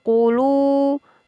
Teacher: Lu adalah mad tabi'i ditandai dengan wawu sukun didahului harokat dhammah. Jadi lam berharokat dhammah atau lu ini dibaca panjang.